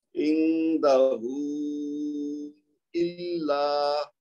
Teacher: نون کا اخفا ہوگا کیونکہ اس کے بعد دال ہے, دال حروف اخفا میں سے ہے, تو لہذا ہم اس کی آواز کو چھپائیں گے. · ایک تو لام مشدد ہے تو اس کو زور دے کے پڑھیں گے, اس کے بعد الف مد آ رہی ہے آخر میں تو اس کی 2 حرکت بھی دینی ہے.